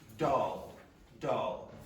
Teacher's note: there's something called a dark L. And it's usually when the L is pronounced at the end of words.